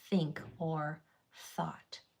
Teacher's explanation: the first sound is made with my tongue going between my teeth and blowing · Th has a voiceless sound, where your tongue goes between your teeth and you blow only air, and a voiced sound where your tongue goes between your teeth, but your vocal cords are used so it vibrates.